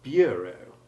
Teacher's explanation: the first syllable of that word has acquired an English U sound